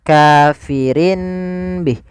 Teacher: iqlab itu mengganti suara Nun menjadi suara mim